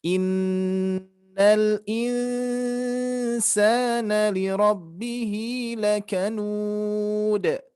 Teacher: nun bertasdid, nun mati bertemu sin, ini harus kita dengungkan, kurang dengungan, Pak, ya.